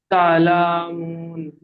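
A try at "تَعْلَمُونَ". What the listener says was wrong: লাটা টান দিচ্ছেন কেন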